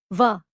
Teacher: An example of its usage is the word vachana, meaning speech or a promise. Like ya, wa is also a compound vowel and is pronounced with a glide from u to a